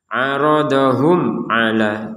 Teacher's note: jelas artinya tidak ada samar tidak ada dengung